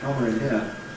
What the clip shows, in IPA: ˈkɒmər